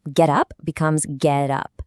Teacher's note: the last sound of the first word jumps over to start the next word. You're not actually changing the words at all.